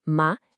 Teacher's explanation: O segundo tom, ma, é ascendente. A gente pode imaginar a voz subindo igual quando se faz uma pergunta, tipo, o quê?